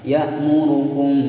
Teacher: mim sukun bertemu ba, hukum bacaan ikhfa syafawi disamarkan. Ya'murukum selama dua ketukan ya samarnya.